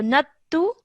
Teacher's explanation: remember not to elongate the nattu. It's just simply 1 second because of the dhamma on top